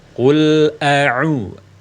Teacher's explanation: yang benar hamzah pertama a, kemudian baru ain dhamma.